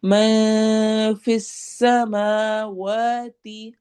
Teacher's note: میں نون کے آواز کو چھپانا ہے